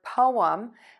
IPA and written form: poʊəm (POEM)